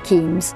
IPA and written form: ˈkeɪnz (Keynes)